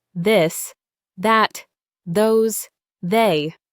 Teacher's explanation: Your tongue is still between your teeth, but your vocal cords vibrate.